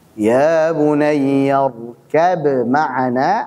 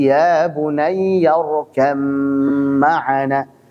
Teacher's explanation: sehingga jadi mim bertasydid dan dipanjangkan gunah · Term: idgham